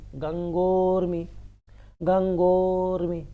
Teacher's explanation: गंगा और ऊर्मी, ऊर्मी मतलब लहर भी होता है, ऊर्जा भी होती है, तो गंगा का दीर्घ आ, ऊर्मी का दीर्घ ऊ, दोनों मिलकर के बनेंगे ओ